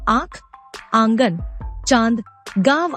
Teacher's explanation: अनुनासिक का उच्चारण करते समय वायु नाक और मुंह दोनों से निकलती है